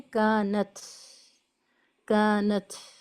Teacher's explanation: کانت کر کے ہمیں آواز کو نہیں روکنا ہے، بلکہ ایک ساؤنڈ آف ایئر فلو باقی رکھنی ہے